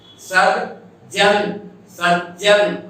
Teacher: सज्जन, सज्जन, आगे ज चवर्ग का था, अतः पूर्ववर्ती तवर्ग का द ज के रूप में परिवर्तन हुआ